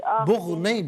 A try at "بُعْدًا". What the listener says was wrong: بغ نہیں عین پڑھے نا بعدل. بعدل